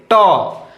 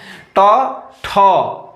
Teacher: देखिए आपका जीभ कहाँ जा रहा है? मूर्धा में जाके टकराएगा। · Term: मूर्धन्य वर्ण